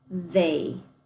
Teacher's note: the TH makes our buzzy TH